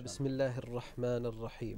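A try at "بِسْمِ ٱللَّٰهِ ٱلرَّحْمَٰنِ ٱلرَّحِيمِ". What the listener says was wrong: Yeah, there was a little bit lam sound on ra. it's very common in Tajweed. Yeah, even Tajweed teachers, they explain to us that ra and lam, they often children get confused in the pronunciation. It should be very, very big difference between these two letters.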